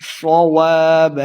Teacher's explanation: پڑھیں گے، الف مدہ ہے، دو حرکات لمع بھی کرنا ہے، صواب صاد کو موٹا پڑھنا ہے، واب وہ پہ اپنے ہونٹ گول کریں گے ، الف مدہ ہے، دو حرکات لمع کر کے پڑھنا ہے،